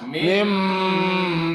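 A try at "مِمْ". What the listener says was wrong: Tapi aja bombong. Merenggangnya aja bombong. Kaya Pak Agus Molo ngene lho.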